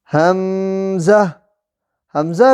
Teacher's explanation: حمزہ بھی حلق کے آخر سے جو سینے کی طرف ہے وہاں سے ادا ہوتا ہے